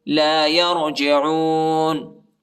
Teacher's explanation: را کو موٹا پڑھنا ہے اور عین کو جو ہے حلق میں پڑھنا ہے